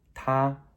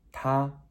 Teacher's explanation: t a with a high flat tone